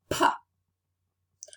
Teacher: produce it your vocal cords are not vibrating there's no voice it's Fortis because we need much more breath force or muscular effort in its production because we don't have the support of our vocal cords it's · it's voiceless because when you when you produce it your vocal cords are not vibrating there's no voice it's Fortis because we need much more breath · the air resonates in our mouth and not in our nose it's not a nasal